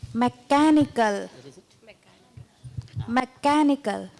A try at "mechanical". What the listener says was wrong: See, there should be some music in your mechanical. It is more, right? Mechanical. Stress it more.